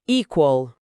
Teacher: E o no final, no inglês e americano, muitas vezes tem o que a gente chama de dark l. É um som de L feito mais atrás na boca, quase um O.